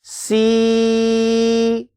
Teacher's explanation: भी कुछ लोगों की आवाज़ नाक में चली जाती है तो यह बिल्कुल सिंपल आवाज़ जानी चाहिए नाक में नहीं जानी चाहिए